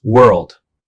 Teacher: World also has one syllable but includes an extra L sound pronounced world.